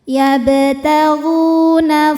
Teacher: Yabtagu ghu mad thobi zohiri karena ada wau sukun didahului baris dommah. Cara membacanya huruf gin ini kita panjangkan dua harakat.